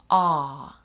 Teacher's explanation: перший звук у нас буде звук довге горлове а а ви бачите там після звуку а іде подвійна крапка подвійні